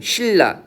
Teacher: 유음이 아닌 것이 인접한 자음 때문에 유음으로 바뀌는 거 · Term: 유음화